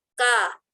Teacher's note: Kan jadi tebal. Jadi kalau kurang menarik sisi bibir akan kedengaran bahwa hurufnya tidak menjadi tipis